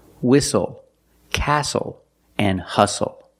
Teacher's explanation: We also see the silent T when you have the spelling pattern S-T-L-E.